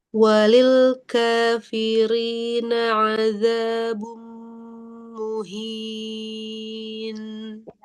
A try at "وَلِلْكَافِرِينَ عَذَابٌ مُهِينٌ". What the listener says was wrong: Ahsanti, barakallahu fiik.